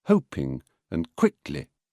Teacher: lightly tripping over the in and Li of such words as hoping and quickly